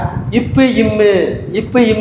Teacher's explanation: மேல் இதழும் கீழ் இதழும் ஒட்டுவது தான் இப்பு இம்மு